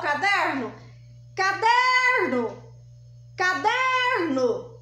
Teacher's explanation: dica para chamar o caderno vamos chamar o caderno caderno caderno Qual que é a sílaba mais forte é o der der bom então ela é classificada em paroxítona por quê Porque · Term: sílaba tônica